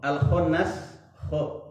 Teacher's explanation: kho yang ada di makhraj hurufnya ada di ujung tenggorokan.